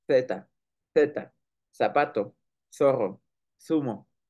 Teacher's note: la Z, que tiene un sonido como S, pero es dental